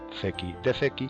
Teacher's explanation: Fijaos como en el perfectum la E es larga